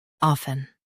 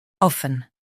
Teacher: US drops t UK keeps t